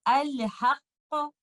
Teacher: پہلے والے لیٹر قاف کو ٹکراؤ کے ساتھ اور دوسرے والے لیٹر قاف کو قلقلہ کے ساتھ پڑھوں گی، اور یہ ایسے پڑھا جائے گا الحق، اور اس کو ہم ایسے پڑھیں گے تب.